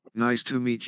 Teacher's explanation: Falling intonation. The pitch of the voice falls at the end of the sentence.